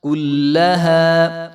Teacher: لام کے اوپر جو ہے وہ شد ہے اور زبر ہے، تو اس کو لمبا نہیں کرنا ہم نے